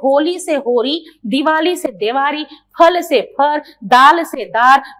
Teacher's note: लट्टू के ल का रस्सी के र में परिवर्तन हो जाना